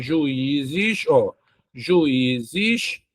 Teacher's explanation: a segunda vogal do hiato é a vogal I, ela é a mais forte, está sozinha, leva acento.